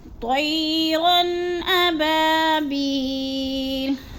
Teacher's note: اب با پہ الف کو لمبا کرنا ہے، الف مدہ ہے، اور بی یا ساکن سے پہلے با کے نیچے زیر ہے تو ادھر یا مدہ کو بھی 1 سے 2 الف کے برابر ہم نے کھینچ کے پڑھنا ہے۔